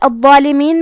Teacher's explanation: حرف الضو ہے اور اس پہ تشدید ہے لہذا ہمیں یہ حرف کو 2 حرف کے برابر پڑھنا ہے